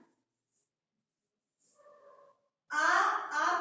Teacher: आ का उच्चारण स्थान कंठ है